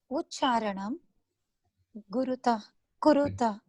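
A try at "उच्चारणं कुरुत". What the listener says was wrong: Kuruta, not Guruta. Kuruta. Ucharanam Kuruta. Ucharanam Kuruta. Ucharanam Kuruta.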